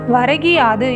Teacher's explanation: முதல் சொல்லின் இறுதியில் உள்ள கூ என்னும் எழுத்து கீ என்று ஒலிக்கிறது. அதுவும் முழுமையாக ஒரு மாத்திரை அளவில் ஒலிக்காமல் அரை மாத்திரை அளவாக குறைந்து ஒலிக்கிறது. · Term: குற்றியலிகரம், குற்றியல் இகரம்